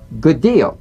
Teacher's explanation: you don't need to fully pronounce the first D like good deal prepare the first execute the second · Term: prepare and link